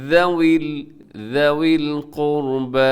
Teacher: قاف موٹا ہے، را بھی موٹا پڑ جائے گا کیوں را ساکن لیکن اس سے پہلے پیش ہے تو را موٹی پڑی جائے گی، ذوی القربى والیتامى والمساکین وابن